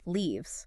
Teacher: Long e sound like in tree and it ends with a v sound.